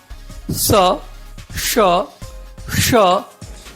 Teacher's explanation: इनका उच्चारण क्रमशः दंतय यानी त वर्ग, तालव्य यानी च वर्ग और मूर्धन्य यानी ट वर्ग की तरह होता है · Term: सिबिलेंट